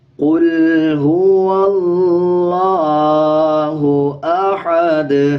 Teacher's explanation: ہا کی آواز کو باریک رکھنا ہے، یہ باریک ہا ہے۔ اکثر لوگ اس کو احد پڑھ دیتے ہیں جو کہ غلط ہو جاتا ہے، اور اکثر ہا کے اوپر جو زبر ہوتا ہے اس کو بھی سکپ کر دیتے ہیں، زبر کو بھی پورا نہیں پڑھتے، ہا کو باریک نہیں پڑھتے اور زبر کو سکپ کر جاتے ہیں۔